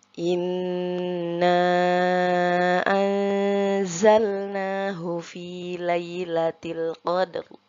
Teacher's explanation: untuk ayat inna a kita baca 4 harokat ya panjangnya karena setelah mad tabi'i yaitu huruf na bertemu dengan hamzah dalam kalimat yang berbeda.